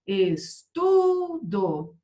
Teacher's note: A sílaba forte não é a última, é a penúltima. Então, ela é paroxítona.